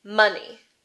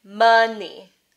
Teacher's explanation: uh as in strut always in the stress syllable and uh as in comma always in the unstressed syllable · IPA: [ʌ]